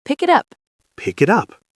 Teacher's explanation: Pick it up. It sounds like one word. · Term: linking